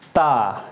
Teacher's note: जीभ जो है ऊपर वाले दांतों से मिलेगी